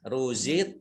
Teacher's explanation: qaf sukun, ini dibacaan qalqalah, ya. Bacaan qalqalah dibaca memantul.